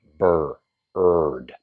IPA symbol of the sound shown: ɜr